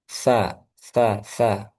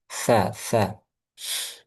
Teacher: Jadi ujung lidahnya sedikit keluar sa seperti hampir digigit sa, tapi sedikit aja, tidak terlalu banyak. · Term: huruf sa